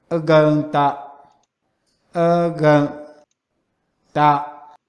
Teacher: the right edge is always the strongest with respect to the laryngeal cues, even when the preceding syllable also carries the same glottalization and creaky voice